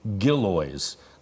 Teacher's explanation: so it's actually gillies the emphasis on the first syllable